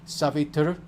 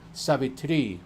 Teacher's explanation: they'll confuse Savitri, which is retroflex R on the end, with Savitri, which is long I on the end